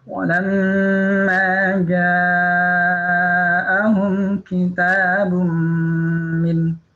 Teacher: Nah, ini ada idgham bi gunnah, ada tanwin bertemu dengan mim, ya, idgham bi gunnah. Ya, suara nun sukunnya dilebur ke mim disertai dengan dengung